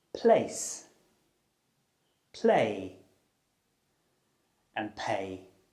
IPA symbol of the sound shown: p